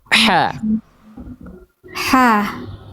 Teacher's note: Rasakan dari tengah tenggorokan ya. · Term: H kecil